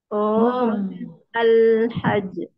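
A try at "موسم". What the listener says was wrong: Mau bukan. Kita musim kan, bahasa Arab mausim.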